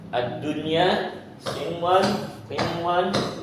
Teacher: Karena nun sukunnya dibaca jelas, nggak berubah, nggak berkaitan dengan makhraj apapun, baik dengan huruf al-halq ataupun asy-syafatain. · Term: izhar mutlaq